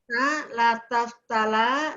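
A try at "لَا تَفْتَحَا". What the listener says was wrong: Bu, pakai ha Bu. Pakai ha. La taftah, la taftaha. Ayo, ulang.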